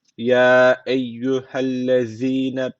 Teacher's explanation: Peltek ve ince şu z harfi unutmayın karıştırmayın